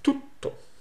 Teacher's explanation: Todo becomes tutto, and it's a double T, so it's prolonged.